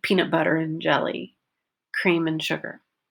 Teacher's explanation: Reducing the word and, cream and sugar, peanut butter and jelly. I don't say and, I say more of a letter N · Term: reduction